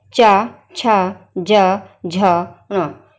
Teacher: आप ये देखिए, जब हम बोल के देखिए चवर्ग को, जैसे चा, वो आवाज़ आ रही है, जब हम चा बोल रहे हैं तो हमारी जो जीभ है का अग्रभाग जो है वो उस तालु वाले स्थान को छू रहा है। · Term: तालव्य